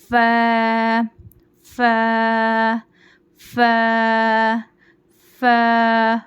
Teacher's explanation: ऊपर के दांत नीचे के होठ के गीले हिस्से को लगाने से अदा होता है बारीक आवाज में पढ़ेंगे इसको फ नहीं पढ़ना फा बारीक पढ़ना फ फ फ फ · اوپر کے دانت نیچے کے ہونٹ کے گیلے حصے کو لگانے سے ادا ہوتا ہے، باریک آواز میں پڑھیں گے. اس کو فا نہیں پڑھنا، فا باریک پڑھنا.